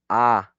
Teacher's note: tu lengua está debajo sí está abajo y obviamente en el nivel central